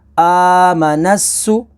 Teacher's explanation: نون سین زبر نس، آمنس، سین پیش سو، آمنسو، سین کے اوپر تشدید ہے تو اسے ہم نے 2 دفعہ پڑھنا ہے، 1 دفعہ نون کے ساتھ ملائیں گے اور دوسری دفعہ خود اپنی حرکت کے مطابق